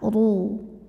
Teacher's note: ro dibunyikan secara tafkhim karena harakatnya damah maka kita bunyikan rnya dengan tebal